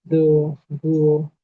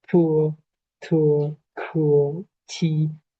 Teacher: Entonces, por ejemplo, en do, duo y ahí no se deja salir aire, no es fuerte la corriente de aire, mientras que tu cuo chi, ahí sí se deja liberar una gran cantidad de aire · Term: aspiración del aire